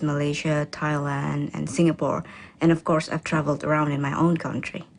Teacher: the countries are listed using a level tone that then falls for the last item in the list